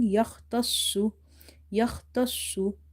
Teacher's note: when you are reading sod, the lips are a little bit rounded and you have to keep them round like this